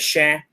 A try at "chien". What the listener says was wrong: No, you said oak. Be careful. Chien, chienne. If you say chêne, that means an oak tree. There's a difference in pronunciation. Chien, chienne. You hear the I? Chien. Chêne is an oak tree. You hear the difference? Chien, chêne.